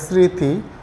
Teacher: একটু খেয়াল করে স্মৃতি আমরা কিন্তু ম ফলার উচ্চারণই করলাম না এভাবে বলা চলে যে ম ফালা শব্দের প্রথমে বসলে সেটার উচ্চারণ হয় না কিন্তু মাঝখানে বা শেষে থাকলে তার উচ্চারণ দীপ্ত হয় ঠিক আছে